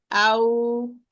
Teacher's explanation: the back of the tongue will be raised and the lips will be rounded. Ow, and I leave a space in between the lips to allow the sound to run through. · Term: natural mad waw